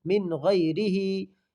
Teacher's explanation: نون ساکن کے بعد حروف حلقی کے 6 حرفوں میں سے غین آیا ہے، اس لیے اس کو ظاہر کر کے بلا گنہ کے جلد پڑھیں گے۔ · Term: اظہار حلقی